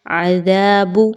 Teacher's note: زال کا مخرج، دال کے مخرج پہ خاص توجہ دیجیے، اس میں سیٹی کی آواز نہیں آنی چاہیے۔